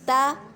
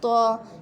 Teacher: تا کو ہم باریک پڑھتے ہیں جبکہ تو موٹے حروف میں سے ہے۔